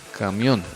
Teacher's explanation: la sílaba tónica está en la última sílaba, en la O